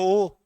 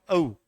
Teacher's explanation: ओ और औ इन दोनों का उच्चारण स्थान क्या है? कंठोष् है।